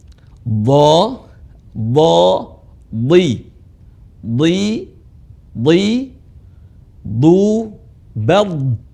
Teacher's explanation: Huruf dha dibaca tebal.